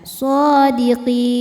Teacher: Mad tabi'inya ya sukun sebelumnya kasrah, huruf yang disukunkannya nun. Maka qafnya panjang, boleh 2, boleh 4 atau 6 harokat asal konsisten dalam sekali baca. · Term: mad arid li sukun